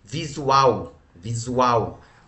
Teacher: Tá vendo que a sílaba forte é a última? Sendo a última, nós falamos que ela é uma oxítona, tá?